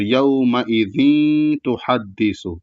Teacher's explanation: تو یہاں پر جب گننا کریں گے تو تنوین کو یہاں پر اصل میں یہ اخفا ہے، کیونکہ یہ بھی اخفا کے قاعدے ہی میں سے ہے، تو یہاں اخفا والا گننا کریں گے، یعنی پورے تنوین کو نہیں پڑھیں گے، کچھ پڑھ کر کے ناک میں آواز لے جائیں گے